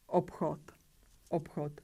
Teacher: So we pronounce voiceless p and voiceless ch